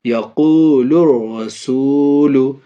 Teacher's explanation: یہاں بھی دیکھیے الف اور لام ہے، الف اور لام کے بعد یہ را، یہاں دیکھیے را حروف شمشی میں سے ہے، اس لیے الف اور لام کو نہ پڑھیں گے بلکہ بعد والے را حروف شمشی سے ملا کر کے پڑھیں گے